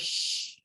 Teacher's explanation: sh takes place more behind than it's towards our teeth in that alveolar ridge but shh it's noticeable it's noticeably behind so it's post alveolar